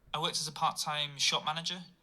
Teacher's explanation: I find the Northern accents don't pronounce the T's in a very aggressive manner. Yeah, there's not a lot of T glottal stopping or whatever.